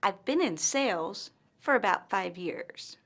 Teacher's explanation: pauses after the word sales and five years · pauses after the word sales and 5 years. You should also notice that the pause follows the words with the most stress.